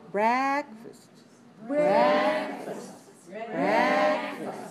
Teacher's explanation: The second syllable is weak. We stress the first syllable.